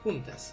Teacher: Juntas son, porque es una vocal cerrada con una abierta